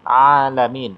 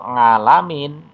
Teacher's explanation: pengucapan makharijul hurufnya ain itu keluarnya dari tenggorokan. Bukan nga, tapi a.